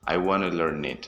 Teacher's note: First, we don't say to, we say ta, just like I said before. And these two words, learn and it, are converted into one word